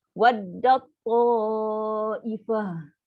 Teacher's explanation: Ta marbuta bunyi macam ha. Angin yang lepas tadi.